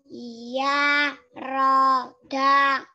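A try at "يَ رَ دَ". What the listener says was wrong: Nah, itu masih panjang-panjang, pendek aja.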